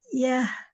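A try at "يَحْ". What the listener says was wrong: Hati-hati. Ini H besar. Jangan jadi H kecil. Yah,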